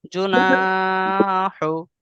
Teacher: জু টান দিবেন না জিমের উপর পেশ হারাকাত টান দেয়া নিষেধ